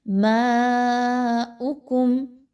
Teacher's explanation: ماؤکم، میم کے اوپر مد ہے، یاد رکھیے اس کو کھینچ کے پڑھنا ہے آپ نے، اور حمزہ کے اوپر پیش ہے تو اس کو بہت ہی کم مقدار میں اس کی حرکت کو رکھیے